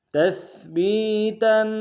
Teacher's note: تا کو سا کے سامنے آئیں گے، سا کو باریک ادا کریں گے